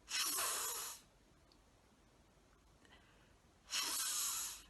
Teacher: our top teeth touch our bottom lip we turn our voice off